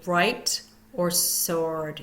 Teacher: we do not hear the W in right or sword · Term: silent w